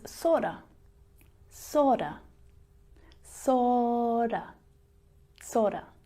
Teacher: Sort of becomes sorta, sorta, sorta, sorta. You hear that flap T. It sounds more like a D in my accent.